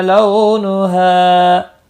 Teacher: لو واولین ہے، تھوڑا نرمی کے ساتھ کھینچ کر ادا کریں گے